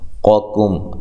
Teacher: قوکم، یہاں دیکھیں قاف کو موٹا، اس قاف کو باریک، پہلی قاف کو موٹا دوسری کو باریک